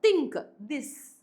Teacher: These sounds are produced by the tip or blade of the tongue touching the upper front teeth. അല്ലെ, ടിപ്പ് അല്ലെങ്കിൽ blade of ദ tongue upper front ടീത്തിനെ touch ചെയ്യുന്നുണ്ടാവും. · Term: Dental